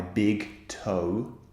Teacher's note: o is actually two vowel sounds squeezed together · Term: diphthongs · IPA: /əʊ/